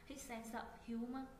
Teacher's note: kết thúc bằng phụ âm sờ, chữ sờ này sẽ nối với chữ o bên cạnh.